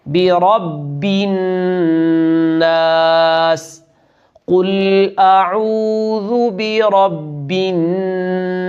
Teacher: زیر کو یہاں بھی ہم نے معروف پڑھنا ہے، برب الناس، اور نون مشدد پر غنہ کرنا ہے